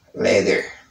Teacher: in American accent, I say letter, because the T between two vowel sounds pronounce as D.